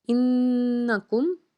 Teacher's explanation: انکم، نون کے اوپر تشدید ہے تو نون کو دو بار ادا کریں گے اور یہاں پہ خوب غنہ کریں گے